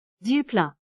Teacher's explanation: Put the stress on that very first syllable.